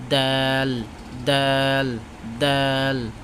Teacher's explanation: বাতাস বন্ধ থাকবে ঠিক আছে জিহ্বার আগা সামনের উপরে দুই দাঁতের গোড়ার সঙ্গে হইতে উচ্চারিত হয় তার মানে দুই দাঁতের গোড়ার সঙ্গে লাগাবে ঠিক আছে দাল দাল